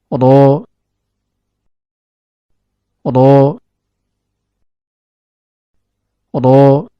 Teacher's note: Huruf ra keluar dari ujung lidah yang bertemu dengan gusi bagian atas.